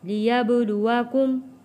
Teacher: با حروف کلکلہ ہے، یہاں پہ کلکلہ ادا ہوگا۔